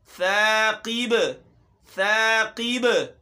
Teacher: क़िब क़ाफ़ है, मोटा हर्फ, लेकिन यहाँ इसके नीचे ज़ेर है, कसरा है, तो यहाँ हम इसको ज़्यादा मोटा नहीं करेंगे। अगर इसको ज़्यादा मोटा करेंगे तो इसकी हालत तब्दील हो जाएगी, बदनुमा नज़र आएगा।